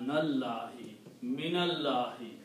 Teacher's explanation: when you pronounce them together, you pronounce noon with a fatha